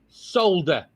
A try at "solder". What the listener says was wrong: Solder. But the L is silent. You don't have to say it. You don't have to say the L. Yeah, but people still know what you mean.